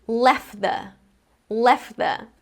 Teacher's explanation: I can skip that middle t sound. But, if the next word after left is actually out, then instead of saying left the and skipping the t, I'm going to say left out. · This word ends in two consonants, so we have f and then t. If left is followed by the word the, then we have another consonant sound there, the. So it's going to be left the. I can skip that middle t sound.